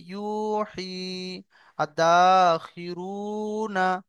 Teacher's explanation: ওয়াও মাদ্দাকে এক আলিফ পরিমাণ টান দিয়ে পড়তে হবে।